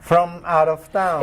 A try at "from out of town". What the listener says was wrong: It's almost like the word is mout instead of from out. Put the M in front of the O. From out.